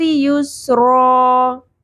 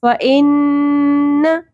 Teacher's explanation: نون کی ساؤنڈ کو کھینچنا ہے، زبر کو نہیں کھینچنا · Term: غنہ